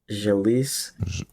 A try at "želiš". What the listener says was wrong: S at the end is pronounced sh, like sh. Želiš